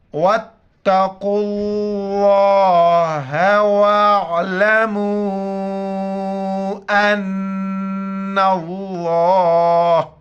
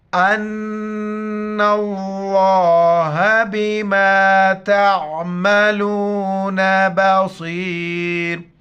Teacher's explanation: وقف کی حالت میں صرف لفظ اللہ کا ہا کو ظاہر کریں گے